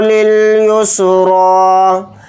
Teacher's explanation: را کے اوپر کھڑا زبر اور را کو تھوڑا کھینچ کر پڑھیں گے، ایک الف کی مقدار، اور را کو یہاں پر موٹا یعنی پر پڑھیں گے، یا نہیں پڑھا جائے گا.